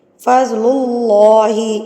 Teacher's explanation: اللہ سے پہلے اگر پیش ہو تو لفظ اللہ جو ہے وہ موٹا ادا ہوتا ہے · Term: اللہ کا لام